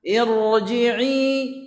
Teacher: ra-nya tebal, ya, karena dia didahului oleh kasrah aridah